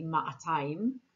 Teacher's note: We have me'a, matayim. Jerusalemites actually pronounce the aleph and they say ma'atayim. Both are correct, but most modern Hebrew speakers say matayim.